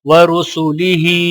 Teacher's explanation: را کے اوپر پیش ہے تو را موٹا پڑھا جائے گا اور ہا کے نیچے کھڑی زیر ہے تو ایک الف کے برابر کھینچ کر پڑھا جائے گا۔